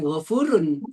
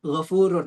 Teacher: melebur ke huruf selanjutnya. Kalau itu kan begitu ya, ghafurur rahim, bukan ghafurun tapi ghafurur. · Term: idgham